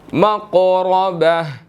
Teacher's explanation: قاف جو ہے وہ یہاں پر ساکن ہے, قلقلہ ہوگا اور موٹا ادا ہوگا